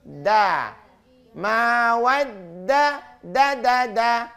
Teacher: Jangan ditempel di langit-langit, tapi di antara gusi dengan gigi. Maka bunyinya lembut.